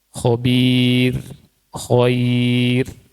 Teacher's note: Nah, kita lihat di sini contohnya khobir. Ya, khobir itu dengan kasroh, ya, dan sebelumnya ya, maka ro-nya tipis